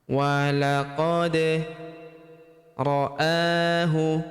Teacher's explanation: Kemudian walaqad ra'ahu, walaqad, huruf da berharokat sukun kita pantulkan atau kita qalqalahkan.